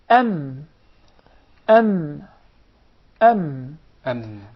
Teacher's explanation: Articulated by closing the 2 lips together. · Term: mim